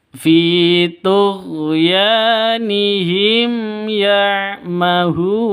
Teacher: Ya'mahun, hun itu panjang, bisa dua hitungan. Bisa empat hitungan, bisa enam hitungan.